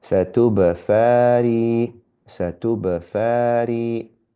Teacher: we squeezed a ba with sukoon, so there's a qalqala there